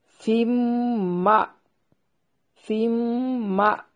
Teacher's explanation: नून तनवीन का इदगाम माअल गुन्ना है।